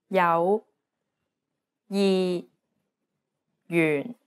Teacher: although it's represented as a j it actually sounds like an English Y sound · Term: J consonant